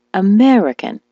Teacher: the word American, as you know, is stressed on the me.